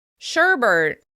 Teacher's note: The frozen treat sherbet often gets an extra /r/ at the end as well: sherbert.